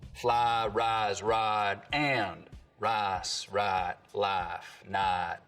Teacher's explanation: there's always been what we can describe as full price smoothing